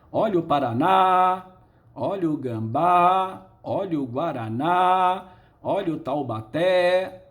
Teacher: Em todas a sílaba tônica é a última, todas elas terminam ou em A, ou E, ou O. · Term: oxítona